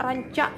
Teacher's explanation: konsonan bersuara yang dibentuk dengan ujung lidah naik dan menempel pada gusi kemudian menghembuskan udara sehingga lidah tersebut secara berulang-ulang menempel pada gusi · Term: konsonan getar